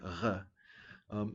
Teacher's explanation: you actually take the back of your tongue and touch it to the uvula which is that thing that hangs down in the back of your mouth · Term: uvular pronunciation of r